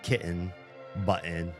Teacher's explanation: I've heard people drop those kind of T's like kitten button.